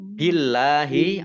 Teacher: Allahnya dibaca tipis karena harokat di depannya kasroh